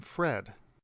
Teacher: produced with the lower lip and the upper teeth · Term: f sound